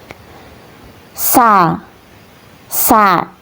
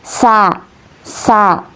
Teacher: bunyi huruf sin keluar melalui rongga antara gigi atas dan bawah